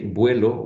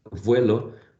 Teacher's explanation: if I say vuelo with a bilabial or vuelo with a labiodental, the meaning does not change